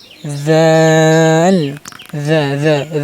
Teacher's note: আপনার সামনে দুই দাঁতের আগার সাথে আপনার জিহ্বার আগাটা লাগাবেন